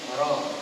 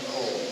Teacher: Ini kedudukan lidah kita bila kita sebut ra, ya. Maknanya ujung lidah kita itu berada di belakang, ngam di belakang, gigi sebelah atas, dan menyentuh langit-langit hampir dengan gusi gigi atas. Itu kedudukan ataupun makhraj, tempat suara ataupun tempat laluan huruf ra itu sendiri, ya, ra, bukan ro.